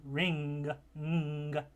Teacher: you close the tongue to the back, to the velum, and then open up the channel between the nasal cavity and the oral cavity. Air passes through while you have that closure of the velum, and so you get the final sound in the word ring, ng, as the velar nasal consonant.